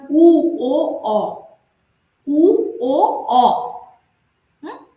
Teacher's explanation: যে স্বরধ্বনিগুলি উচ্চারণের সময় আমাদের জিহ্বা পিছনে পিছিয়ে যায় তাকে পশ্চাৎভাগস্থ স্বরধ্বনি বলে